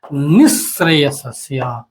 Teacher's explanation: जब बोलते हैं प्रथम से लोग लिखते हैं, लेकिन जब बोलते हैं तो कैसे बोलेंगे, इसको जोड़ देंगे, निश्रेयसस्य। यह विसर्ग चूंकि इसमें तालव्य स है, इसके चलते यहां तालव्य स हो गया।